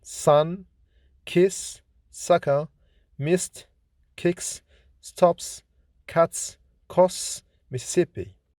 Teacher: S is voiceless, fortis, alveolar, fricative consonant